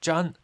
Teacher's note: In this context, the character Zhan is pronounced in the first tone.